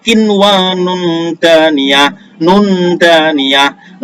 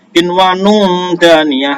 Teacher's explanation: Nomor 3, kinwanun daniyah, nun daniyah, nun mati atau tanwin bertemu dengan da, ini adalah ikhfa karena samar-samar ya